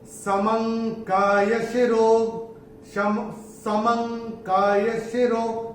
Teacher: पहले चरण में ये जो म के ऊपर जो अनुस्वार आ रहा है, इसके बाद का अक्षर है क, और अनुस्वार के बाद अगर क आएगा तो अनुस्वार का उच्चारण होगा अंग